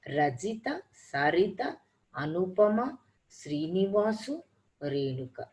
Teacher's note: But when you listen to the Indian names, all the parts are heard almost equally.